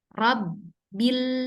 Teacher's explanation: Bak sukun kan dia ditahan ya di bibir. Rob berarti ada waktu sebentar.